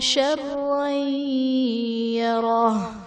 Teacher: شرعی یرہ میں را پر دو زبر کی تنوین ہے، تنوین کے بعد حروف یرملون میں سے یا ہے تو یہاں پر ادغام مع الغنہ کا قاعدہ ہوگا، یعنی تنوین میں ہم غنہ کر کے پڑھیں گے